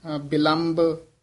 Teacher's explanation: ਇਹ ਬਬੇ ਹੀ ਦੋਵੇਂ ਬੋਲਣੇ ਹਨ ਕਈ ਵਾਰ ਬਿਲੰਭ ਭਬਾ ਬੋਲ ਜਾਂਦੇ ਹਨ